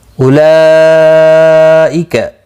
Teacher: آج کی اس ویڈیو میں سورۃ عمران کی آیت نمبر 136 7 اور 138 سیکھیں گے تجوید کے ساتھ. اولئک مد متصل ہے، 4 الف کی مقدار کے برابر کھینچ کر پڑھیں گے